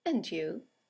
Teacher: and you is a statement it has a falling intonation and it's used to return the compliment or the greeting right